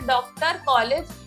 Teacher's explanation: इसका उच्चारण अ तथा औ के मध्य की ध्वनि के रूप में होता है। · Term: अर्धचंद्र